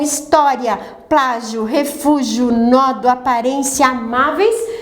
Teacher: você sempre tem a sílaba tônica na penúltima sílaba e na última sílaba você tem um encontro vocálico. Esse encontro vocálico é um ditongo. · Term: paroxítonas terminadas em ditongo